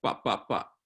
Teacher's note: labial means with your lips right so bop-bop-bop but all without air coming out